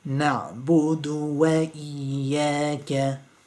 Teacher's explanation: So the ayn, because it's got a sukoon, you have to kind of grab the ayn quite quickly. It's a strangling kind of sound.